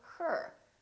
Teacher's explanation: this sound is produced with the uh sound the very short uh neutral sound plus the r